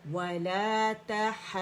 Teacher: حرف مد الف جو ہے، یہ ہا کی آواز کو 6 کاؤنٹ کھینچے گا · یہ دواد ہے، آواز بند نہیں ہوئی